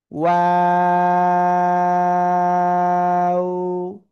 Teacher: দুই ঠোট শুরুতে গোল হবে দুইদিকে মাঝখানের দিকে আবার প্রসারিত হবে আবার শেষে এসে গোল হবে